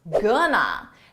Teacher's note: We take 2 words, going to, and we reduce it into one, gonna. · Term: reduction